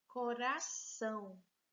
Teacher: a gente vai considerar que o são é a sílaba forte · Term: palavra oxítona